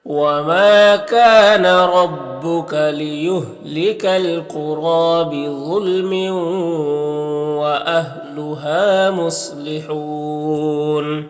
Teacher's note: रा को ऊपर खड़ा ज़बर है तो एक अलिफ के बराबर खींचेंगे और रा को पुर पढ़ेंगे